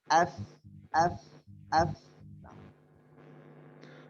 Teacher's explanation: bibir bawah atau punggung bibir bawah bertemu dengan gigi seri bagian atas, keluar huruf fa